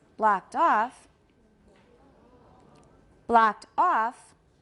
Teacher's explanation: The second part usually has tonic stress, so it's going to sound higher. It's going to sound like it has more stress.